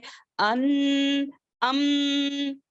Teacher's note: میم سمجھ میں آتا ہے کہ ہونٹوں کا لیٹر ہے، اور نون جو ہے زبان کا لیٹر ہے، یہ ٹچ ہوتا ہے، لیکن اس کی آواز جو ہے ناک میں گونجتی ہے، ناک میں جاتی ہے، جیسے کہ ان، ام، ناک میں گونجتی ہے، اسی لیے اس کو بھی کہتے ہیں مخدرہ۔ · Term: الخیشوم